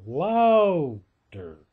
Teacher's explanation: So I say that the accent in louder is on the first syllable, louder, okay?